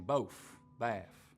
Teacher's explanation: you also get f for final th Sounds